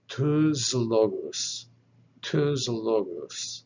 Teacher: with alum lambda lambda happens to be a voiced consonant so the sigma on the end of the first word will become voiced and pronounced like a z sound